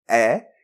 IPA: ɛ